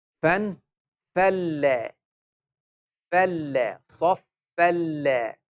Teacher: We will not take the sound to the nose. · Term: idgham without ghunna